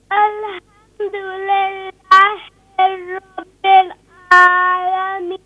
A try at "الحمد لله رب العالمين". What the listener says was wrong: Now you're still reading very fast. Please, you can read slowly.